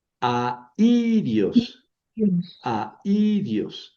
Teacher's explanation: sobre la vocal débil sobre la que voy a poner el acento para indicar que, ojo, lleva diéresis, eso quiere decir que no es diptongo, aunque sea una fuerte y una débil, las pronuncio en sílabas separadas